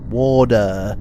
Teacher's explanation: Americans don't even say T, they treat it as a D.